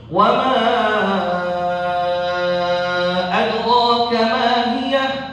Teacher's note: ada imam yang membaca jaiz munfasilnya sampai 6. Sampai 6 harokat.